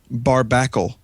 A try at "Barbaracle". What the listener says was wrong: Okay, you are mispronouncing this. Barbaracle. Or Barbaracle. You said Bar. You said barbackle.